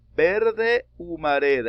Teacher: Aquí termina en vocal y empieza con H muda. Esto también se considera sinalefa.